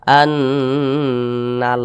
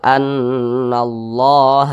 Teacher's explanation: berbaris ke atas atau huruf di belakang kalimat Allah berbaris damah maka kalimat Allah dibaca tebal · maka kalimat Allah dibaca tebal, dibaca tafkhim. Nah, jadi ini dibaca Allah, jangan dibaca tipis, jangan dibaca seperti ini.